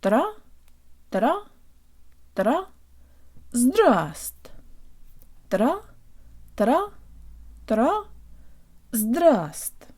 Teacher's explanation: The first V is silent in this word, so we only pronounce the S and the T.